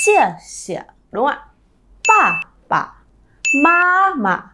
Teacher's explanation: chúng ta phải dồn trọng âm vào cái từ đằng trước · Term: thanh nhẹ